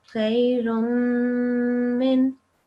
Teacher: there is a meme with a sukoon, with the shadda. So you do make the nasal sound for this as well.